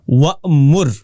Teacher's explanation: وَأْمُرْ میں حمزہ واپس آ جاتا ہے جب پیچھے سے الفاظ ساتھ ملا کر پڑھتے ہیں